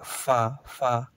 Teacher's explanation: উপরের সামনের দাঁতের ডগ এবং নিচের ঠোঁট মিলিয়ে পড়বেন, দেখবেন ঠিক উচ্চারণ হচ্ছে। হালকা হালকা বাতাস বার হবে, ফা, ফা, ফা হবে না কিন্তু ফা হবে।